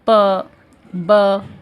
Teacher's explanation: हमारा मुंह जो है वो पूरी तरीके से बंद हो जाता है जब हम प ब ऐसा साउंड निकालते हैं. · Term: प्लोसिव्स